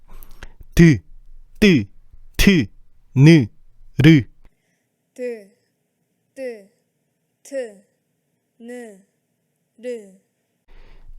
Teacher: 이 소리들은 혀끝이 윗잇몸, 치조에 붙었다가 떨어지면서 만들어지는 소리야. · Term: 잇몸 소리